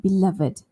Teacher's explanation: So that's a special adjective that we'll say ed, the id sound.